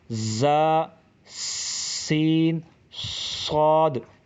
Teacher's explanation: زا، سین، صاد، ان تینوں حروف میں سیٹی کی آواز نکلتی ہے، اسی وجہ سے ان کو سیٹی والے حروف یعنی حروف صفیریہ کہا گیا ہے۔